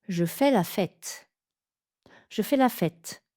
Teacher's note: On va donc allonger le dernier mot de la phrase.